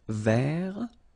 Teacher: So masculine form, don't pronounce the final T.